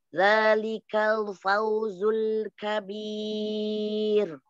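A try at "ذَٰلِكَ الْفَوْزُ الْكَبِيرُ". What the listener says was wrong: Zalikal, tipisin lagi lamnya.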